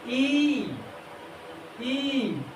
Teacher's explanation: संवृत्तीय स्वर, इसमें सबसे कम मुख खुलता है